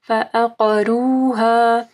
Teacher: فعقروها، عین کو واضح پڑھنا ہے، قاف کو موٹا پڑھنا ہے، را کے اوپر پیش ہے تو را موٹی پڑ جائے گی، اور فعقروها الف مدہ کو پڑھنا ہے۔